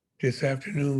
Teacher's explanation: not there there is no th sound in west african languages african-american speakers of english take the th sounds and change it to a d